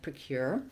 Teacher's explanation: it has second syllable stress, so the stress is on the word or the syllable cure, and it's pronounced just the same as the word cure, as in to cure someone.